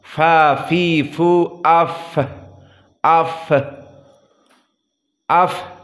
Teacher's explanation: misalnya fa, dia harus hams, jika disukunkan harus keluar nafas.